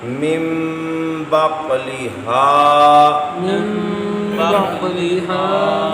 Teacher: مم بقلہا، من بقلها یہاں بھی نون ساکن کے بعد با آیا، آپ نے نون ساکن کو میم میں بدل کے غنہ کیا یعنی اقلاب کیا